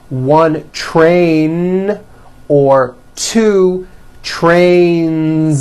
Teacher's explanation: Two trains with a voiced Z ending.